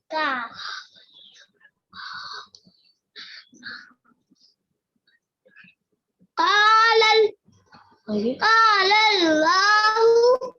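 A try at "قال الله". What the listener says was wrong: मोटा कीजिए, लॉहु, लॉहु। लानी, लाम को मोटा कीजिए। देखिए लाम से पहले जबर है, अल्लाह से पहले जबर।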